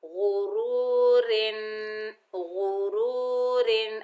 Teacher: را کے نیچے دو زیر، دو زیر کی وجہ سے را کو باریک پڑھیں گے